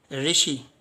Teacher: यानी जीभ जो है दांतों से हल्का पीछे मसूड़ों पर लगती है, इसे मूर्धा कहते हैं।